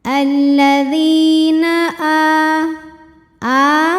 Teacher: cara membacanya huruf Dal ini kita panjangkan dua harakat saja